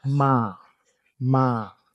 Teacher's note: Ma is like flat. No movement in your voice when you say it. It's literally just say the word m a and drag it out. · The midtone in Thai, there's five tones in Thai in total. The midtone is the one that's like flat. It's usually like flat and dragged out.